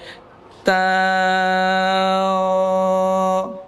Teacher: ta itu bukan disebabkan mulut kita bundar gitu. Ya, ta bukan, tapi karena pangkal lidah terangkat. Pangkal lidah terangkat. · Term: sifat isti'la